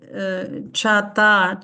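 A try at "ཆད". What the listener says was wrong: Cha, ta, che. Attention, le ta est Parce que le ta est un suffixe muet. Cha, ta, che.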